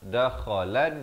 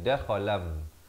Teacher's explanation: Bunyi nun ditukarkan kepada bunyi mim dengan 2 harakat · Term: iqlab